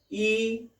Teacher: Front of the tongue goes towards the hard palate, hard palate के तरफ वो जाता है। यानी हार्ड पैलेट का और उसका एक समूह संगम वहां पर हो जाता है और हम यहाँ पर यह फ्रंट वॉवेल्स जो होते हैं या वॉवल्स होते हैं उन्हें हम वहां पर उच्चारण करते हैं, उनका उच्चारण हम इसी तरह से करते हैं।